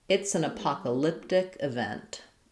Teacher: main stress is going to be on poc syllable, and second, and also some stress on vent of event